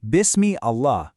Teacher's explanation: if you connect that word to the one before it, the hamza completely vanishes. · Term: connecting hamza